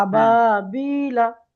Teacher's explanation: আবা টান হবে, বা টান হবে এবং বি টান হবে